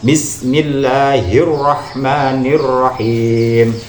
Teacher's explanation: ketika tasdid itu jangan terlalu banyak getarnya biasa saja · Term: huruf ro